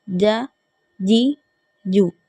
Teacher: زبان کے درمیان اور تالو کے درمیان والے حصے کو استعمال کر کے ہمیں جیم کو ادا کرنا ہے